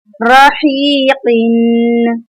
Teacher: रा ज़बर रा, हा या ज़ेर ही, हा की हम हलक से अदायगी करेंगे